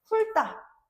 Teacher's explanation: 훑다는 리을 티읕에서 티읕이 떨어져 나갔대. 그럼 리을만 남게 되는 거지. 그 다음에 어미 디귿으로 시작하는 형서형 종결 어미를 만나게 되면서 훑다라고 발음이 될 수 있겠죠. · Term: 자음군 단순화